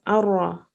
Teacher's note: the ra indicates that we drop the noon entirely. We don't read the noon sakin at all. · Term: idgham